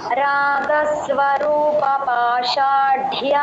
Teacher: డ కి లాస్ట్ లో మహాప్రాణం పాషాఢ్య అనాలి